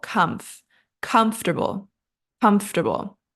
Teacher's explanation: that middle part is pronounced quickly like tur comfortable comfortable and the stress is on our first syllable · And the stress is on our first syllable, comfortable, comfortable.